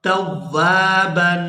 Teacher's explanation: یہاں تنوین پر اخفا کریں گے، آواز ناک کے اندر جائے گی اور اس کو 1 سے 2 سیکنڈ کھینچیں گے